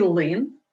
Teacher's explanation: у слові лин всі приголосні тверді